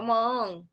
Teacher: ठीक है, अनुनासिक का प्रयोग मौ नहीं है, मौ के औ के आ के बाद दीर्घ स्वर का प्रयोग मतलब अनुनासिक का प्रयोग होगा। दीर्घ स्वर है और इसके उच्चारण करने के बाद अनुनासिक का प्रयोग होगा, तो मांग ऐसे बनेगा, मांग।